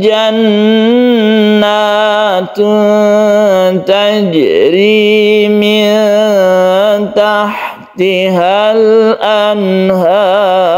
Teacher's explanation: Ketika membaca ro disukun, sebelumnya ada fathah, ini kita tebalkan atau tafkhim.